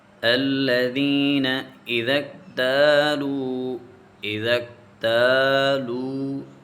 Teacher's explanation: الذین ذال نرم حروف میں سے ہے، اس کے بعد یا ساکن ہے، یا ساکن سے پہلے زیر ہے تو یہ یا مدہ ہے، اس کو ہم تھوڑا سا کھینچیں گے